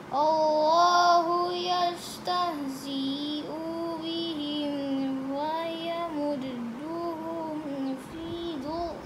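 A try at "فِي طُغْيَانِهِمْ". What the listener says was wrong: Bukan duk. This is to. Tugh.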